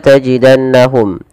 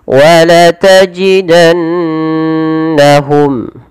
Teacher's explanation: Pada lafal nun berharakat tasydid ini perlu ditahan suara bunyi nunnya. Jangan jangan langsung dilepas. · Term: ghunah